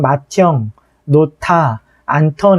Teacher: 디귿과 히읗이 더해지면 티읕이 된다